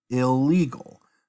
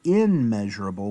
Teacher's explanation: the N actually assimilates into the L and you can see how it's kind of like a doubling